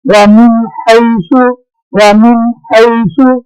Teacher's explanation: ومن حیث، اب دیکھیں ہا جو ہے یہ حرف ہلکی میں سے ہے، نون ساکن کی آواز کے بعد ہلکی حرف آ گیا، نون ساکن کی آواز کا اظہار ہوگا، ظاہر ہوگی